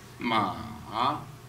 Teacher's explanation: This this tone, first the down, and then raise up.